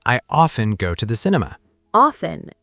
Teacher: in British English, a lot of people say often. They drop the T.